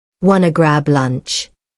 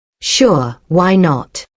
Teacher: Rises at lunch. Sure, why not? Falls at not. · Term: rise and fall